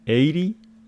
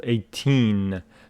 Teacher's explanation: The stress of this one falls on the first syllable, 80. This one on the second syllable, 18.